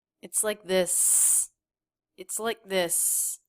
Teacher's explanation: Super quick word like, not released. Like this, like little stop for the K.